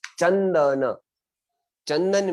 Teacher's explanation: चंदन में मैंने च के ऊपर बिंदी है, आगे द है, आगे द होने से त थ द ध न, तो मैंने न किया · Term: अनुस्वार का उच्चारण